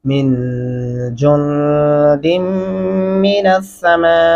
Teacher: یہاں پہ نون کے اوپر بھی غنہ ہوگا اور جیم کے آگے نون کے اوپر بھی غنہ ہوگا